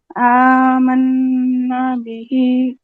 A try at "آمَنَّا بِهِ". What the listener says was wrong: نہیں، آمنا به. نا پہ غنہ کے بعد پھر نا پہ دیر بھی کیجیے کیونکہ مد اصلی ہے. اب آپ کا کیا جیسے آمنا به، ٹھیک ہے، من پہ غنہ اور پھر نا کرنا ہے.